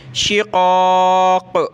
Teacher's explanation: क़ाफ़ दोनों बड़े हैं, मोटा करेंगे, क़ाफ़ पे क़लक़ला करेंगे